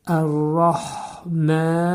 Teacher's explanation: Mədə demək məd var. İki hərəkə miqdarında uzadırıq. Rim burda mədis hökmündə olacaq.